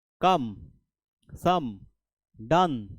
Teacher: এখানে ও এর উচ্চারণ কিন্তু ও নয় এখানে আ উচ্চারণ হচ্ছে